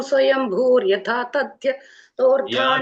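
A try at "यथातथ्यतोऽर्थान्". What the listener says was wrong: യാഥാ തഥ്യഥാ യഥാ അല്ല യാഥാ തഥ്യഥാ യാഥാ തഥ്യഥോർത്ഥാൻ വ്യഥഥാത് ഛാശ്വതിഭ്യഃ സമാഭ്യഃ തഥ്യഥോ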